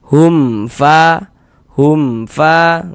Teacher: Maka dibaca jelas huruf mim sukunnya dibaca jelas kemudian tidak didengungkan maka dibaca pendek saja. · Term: izhar syafawi